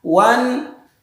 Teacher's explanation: jangan mantul di lafaz nun sukun wanhar